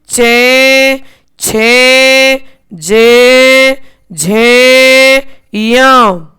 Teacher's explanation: ई चे वर्ग या और शे इन सभी का उच्चारण स्थान तालु होता है। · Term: तालव्य